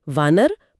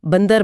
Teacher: व बोलते समय होंठ पूरी तरह नहीं मिलते। जबकि ब बोलते समय मिलते हैं।